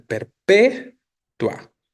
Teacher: Ni siquiera está en el diptongo la sílaba tónica en perpetua. La sílaba tónica está en P, ¿no?